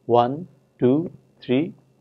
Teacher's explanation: the speakers tend to have something like a rising tone towards the end like as if they are reading in a list